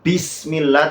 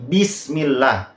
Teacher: Kalau hames, Bismillah itu di tangan kita kerasa ada nafas. Sedangkan jahar, Bismillah itu tidak ada nafasnya.